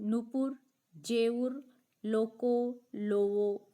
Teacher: दो स्वरों के मध्यवर्ती व्यंजनों का लोप भी हो जाता है